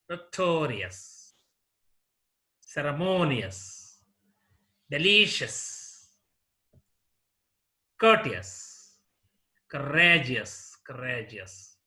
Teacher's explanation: last one for example notorious notorious this war has three syllables here the second syllable is stressed